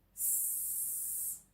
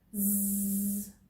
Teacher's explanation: You can feel the vibration in your throat when you say this letter. S is an unvoiced sound because we do not use our vocal cords to produce it, whereas Z is a voiced sound because we do use our vocal cords to make it